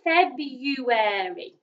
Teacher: make airy at the end so feb u airy february and it's got an r that we usually do not pronounce